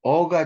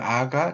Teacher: 어가 중모음이고, 그 다음에 아가 저모음, 혀의 아랫부분.